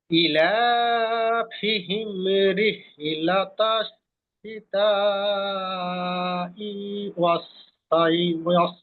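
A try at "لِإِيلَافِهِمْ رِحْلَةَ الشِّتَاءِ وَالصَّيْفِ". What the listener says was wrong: প্রথমে একেবারে হামজাতে ই একটু টান হবে। ইলাফিহিম।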